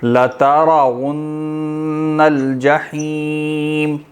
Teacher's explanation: لترون یہاں پہ بھی را کیا ہوگی موٹی ہوگی